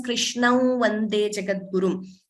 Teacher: Instead of chanting anuswara completely, we can chant the nasal V.